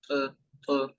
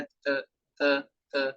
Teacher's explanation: جو طا ہے یہ موٹا حرف ہے، اور جبکہ جو تا ہے یہ باریک حرف ہے۔